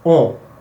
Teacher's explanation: the last part is a nasal vowel